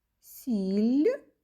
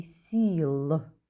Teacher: у слові сіль останній звук ль м'який А у слові сіл звук л твердий